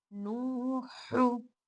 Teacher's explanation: हम इसको थोड़ा सा खींच कर पढ़ेंगे, एक अलिफ या दो हरकत की उतना खींच कर पढ़ेंगे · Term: वाव मत